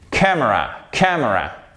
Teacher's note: Vous avez un accent tonique qui va jusque sur le M.